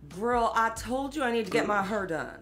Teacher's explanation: there's a feature in african american english in places like st louis and memphis called the near square nurse merger